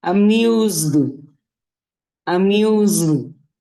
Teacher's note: Tiene que escucharse el sonido de la D, por eso nos vibra aquí.